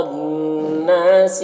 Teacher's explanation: الناس را کے اوپر زبر ہے را کو پر پڑھیں گے نون مشدد غنہ ہوگا اور الف مدہ ہے ایک الف کے برابر کھینچیں گے لام میں الف مدہ ہے ایک الف کے برابر کھینچیں گے